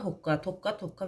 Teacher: qoşa qda isə birinci samit onun kar qarışığından əvəz olunur.